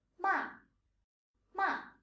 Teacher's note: And finally, the fourth tone. It's a falling tone from the higher scale of 5 right down to 1.